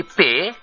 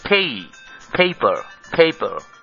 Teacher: এখানেও প্রথম পি এর উপর অ্যাকসেন্ট রয়েছে, আর আমরা যখন বলি পে তখন বাংলা মতে বলি, কিন্তু আসলে এখানে হবে পেই, পেপার, পেপার।